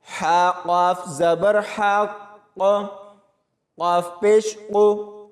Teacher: ہا کی آواز حلق سے نکلے گی اور اس قاف کو موٹا پڑھا جائے گا۔ اور اگر یہاں پر وقف کرتے ہیں تو قاف کے اوپر پیش کو نہیں پڑھیں گے، لیکن اگر وقف نہیں کرنا تو پیش کو پڑھتے ہوئے آگے والے الفاظوں کے ساتھ ملا کر پڑھیں گے۔